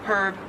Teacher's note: Silent H. And in Australian English, it is herb. You do pronounce the H.